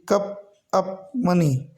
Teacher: इसमें आ आता है, बस बहुत छोटा बोलने में आता है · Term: अ की साउंड